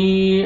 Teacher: را کو مزبر ہے، را کو موٹا کرنا ہے اور با مشدد با شدہ ہے، با کے ساتھ ملانا ہے.